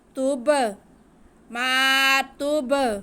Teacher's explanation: حروف کلکلہ اگر ساکن ہو تو ان کو جھٹکا دے کے پڑھتے ہیں. ہم با کو یہاں پہ جھٹکا دے کے واضح کر کے پڑھیں گے